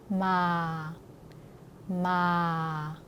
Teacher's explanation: 중국어는이 성조를 발음할 때 세게 내리지만 베트남어는 부드럽게 그리고 좀 더 끝까지 좀 더 아래로 내려줍니다